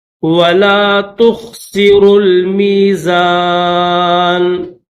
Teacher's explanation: را کے بعد یہ واو نہیں پڑھیں گے، را کو لام کے ساتھ ملائیں گے